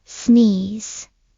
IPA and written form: sniːz (Sneeze)